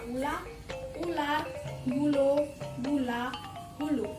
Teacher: Fonem U adalah vokal tinggi belakang yang diucapkan dengan kedua bibir. agak maju ke depan dan agak membundar, sedangkan belakang lidah meninggi.